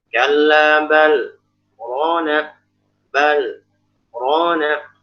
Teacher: Jadi dia tanpa mengambil nafas, berhenti tapi niatnya wasol sebenarnya, tanpa mengambil nafas. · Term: sakta